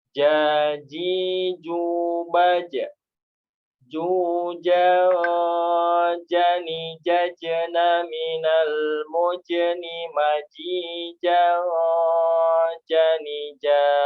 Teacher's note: tempat keluar hurufnya adalah di bagian tengah lidah kita dan bagian tengah langit-langit mulut paling atas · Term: huruf jim